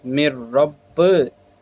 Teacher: یہاں نون ساکن کے بعد را آ گیا، یہاں پہ ہم نے گنہ کر کے نہیں پڑھا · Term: ادغام یرملون بلا گنہ